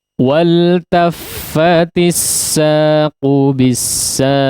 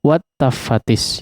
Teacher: Ya, di sini wal taffatis saqu ya, wal, lamnya hidup ya, maksudnya lamnya sukun izhar. Di sini bukan alif lam syamsiyah ya.